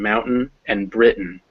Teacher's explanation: it becomes uh when unstressed as in mountain and britain